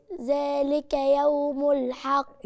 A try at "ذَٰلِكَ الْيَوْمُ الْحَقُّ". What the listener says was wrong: إزاي يعني؟ كلتي الألف واللام ليه؟ ذلك اليوم الحق. الحق.